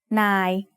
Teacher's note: We write น า ย with น อ ห น ู ส ร ะ อ า ย อ ย ั ก ษ ์ Again, it is mid-tone because it has an initial low-class consonant and has a live ending.